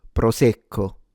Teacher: It's stronger or longer sound co and the o at the end you can close it.